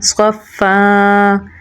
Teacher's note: صاد کو پر یعنی موٹا پڑھیں گے اور فا کے ساتھ ملائیں گے کیونکہ فا کے اوپر تشدید ہے۔ فا میں صفت حمز پائی جاتی ہے تو سانس تھوڑا جاری رکھ کے پڑھیں گے